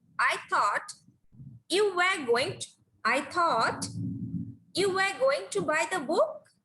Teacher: So that's why book here, while we pronounce book, we are speaking in a rising tone.